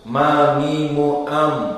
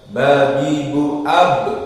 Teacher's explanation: Intibaknya di mim lebih lunak daripada ba yang lebih keras.